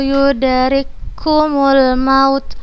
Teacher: huruf Kaf sukun bertemu dengan huruf yang berharakat kita bacanya langsung ke huruf yang berharakat dan tanpa guna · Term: idgham mutamatsilain